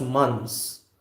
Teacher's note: We don't intend to say months. We don't release the th sound here. In months, we simply go as months.